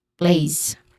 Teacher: Plays has a diphthong a sound, and it ends with a buzzing sound